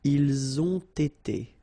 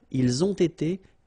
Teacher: You get first the liaison z and then you get the t.